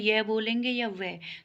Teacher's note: यह व के उच्चारण में हवा बिना संघर्ष के निकलती है। जब हम यह बोलेंगे या व तो इनके उच्चारण में हवा बिना संघर्ष के निकलती है, इसीलिए इन्हें अर्धस्वर भी कहते हैं। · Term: संघर्षहीन